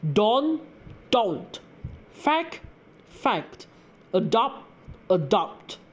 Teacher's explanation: final consonants of words are often left out in spoken Manglish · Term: Omission of final consonants